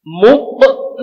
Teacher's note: Ketika berharokat sukun, maka qaf bukan hanya 5 sifat, tapi ada 1 sifat, yaitu sifat qalqalah. Muqmahuna. Jadi ada pantulan.